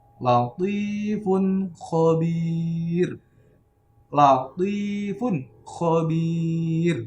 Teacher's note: Nah, dia jelas, ya, terang, dibaca jelas dan dibaca terang tanpa ada gunahnya atau suara, tidak ada suara hidung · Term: izhar